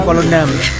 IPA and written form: ˌvoːlənˈdɑm (Volendam)